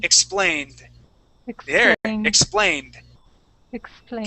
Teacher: so it's not a t sound it's a D sound d d really soft d d all all in your tongue